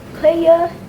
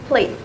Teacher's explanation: if you notice the word player has one more weak vowel at the end while the word play don't have it's just simple a.